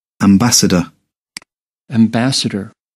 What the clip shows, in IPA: æmˈbæs.ə.dər